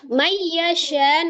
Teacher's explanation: nun sukun ketemu dengan ya, idgham bi gunnah, digunnahkan. Syanya adalah mad yang bertemu dengan hamzah di dalam satu kalimat.